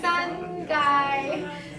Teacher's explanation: So you have the tone going from a high tone dropping down.